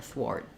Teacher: we're going to probably have an unreleased T there